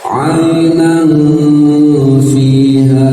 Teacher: Fa itu makhrajnya gigi, ujung gigi seri atas menyentuh bibir bawah bagian dalam, sentuhkan saja ketika didengungkan ya, ketika disamarkan.